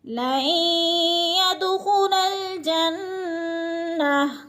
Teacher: لَن يَدْخُلَ الْجَنَّةَ، خا موٹے حروف میں سے ہے، جنہ پہ غنہ ہو رہا ہے کیونکہ نون مشدد آ گئی ہے، ناک میں آواز لے جائیں گے، غنہ کریں گے